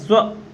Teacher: जब हम स्व की ध्वनि बोलते हैं, स्व, ठीक है, तो यहां पर हमें ऊ की ध्वनि का आभास होता है